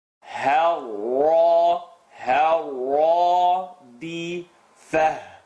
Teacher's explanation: Remember, ha light, first part of the throat, ra heavy.